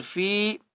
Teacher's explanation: فی قلوبہم، فا یا زیر فی، فا کو ایک الف کی مقدار کھینچ کر پڑھیں گے